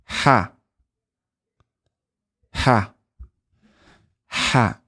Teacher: Ha is where you emit some air, and it comes from the middle of the throat here.